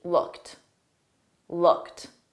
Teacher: The ED on looked is pronounced as a soft T.